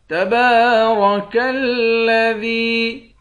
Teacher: را کو موٹا پڑھیں گے، دال کو یا کے ساتھ ملا کر ایک الف کے مقدار کھینچ کر پڑھیں گے.